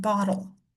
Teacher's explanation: When we have a double T in the middle of a word, most of the time, it kind of comes out sounding like a D instead